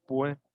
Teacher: muchas personas que vivimos en la costa no pronunciamos la S al final de palabra. Por ejemplo, no decimos pues, muchas veces decimos pues.